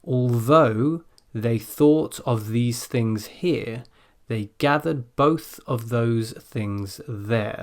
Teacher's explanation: It's quite a lot of voiced TH in that tongue twister, but also a couple of unvoiced THs.